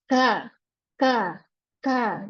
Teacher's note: Nah, ternyata di kaf ini lidahnya rileks, dia tidak cekung. Makanya kaf ini masuk ke dalam kategori huruf-huruf yang tipis, walaupun pangkal lidahnya naik.